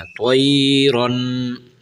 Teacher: یہاں حرف تو بھی موٹا کرنا ہے اور یہ را جو کھڑی ہے یہ را کو بھی موٹا پڑھنا ہے، ٹھیک ہے، طیرن۔ تو یہ تنوین کے اوپر غنہ کرنا ہے، تھوڑا سا آواز کو ناک میں سے لے جانا ہے